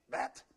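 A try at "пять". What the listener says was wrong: Pa, like a P. Pat. Pat. Pat.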